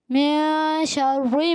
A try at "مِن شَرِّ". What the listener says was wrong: من شر، را باریک کریں.